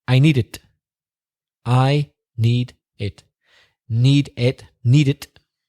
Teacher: like I need it I need it need it need it joins up because need ends with a consonant and it begins with a vowel